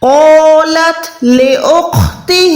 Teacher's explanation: ہا کھڑی زیر ہی ہے، اس کو بھی 1 سیکنڈ لمبا کریں